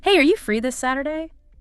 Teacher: Casual, friendly, rising intonation for the question.